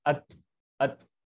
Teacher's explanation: ता क्या जो है अपनी जुबान को ऊपर जो अपने दांतों की जड़ है वहां लगाने से ता अदा होता है। अत, अत। ठीक है, जुबान की जो नोक है उसको आप कहाँ लगेंगे, अपने दांत है ना, अंदर के दांत के जड़ की तरफ ऊपर, अत, अत।